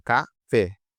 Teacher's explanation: ca-fé, é a última sílaba que é mais forte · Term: oxítona